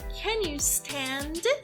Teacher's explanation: E sobe um pouquinho aqui a entonação no final, porque é uma pergunta de yes ou no